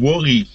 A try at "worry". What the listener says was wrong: Good. Your V and W sounds are good.